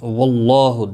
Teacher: واللہ دیکھیں یہاں پر پیش ہے، اور اب یہاں پر زبر اور یہاں پر زیر، اللہ کے لام کے پچھلے حرف کے نیچے یہاں پر دیکھیں زبر، تو اللہ کا لام پر پڑا جائے گا، اس کے اوپر کھڑی زبر بھی ہے، ایک الف کے برابر کھینچ کر پڑھیں گے